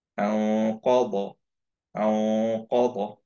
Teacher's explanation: খেয়াল করি কফের মাখরাজটায় আমরা নুনটাকে ধরে রাখছি